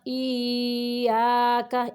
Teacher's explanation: شد ہے اس لیے 2 یا ہیں، اتنی دیر رکنا ہے کہ دونوں یا جو ہیں ان کی ادائیگی ہو جائے